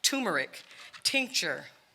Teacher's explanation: the first letter T is a stop disrupts airflow quick sharp staccato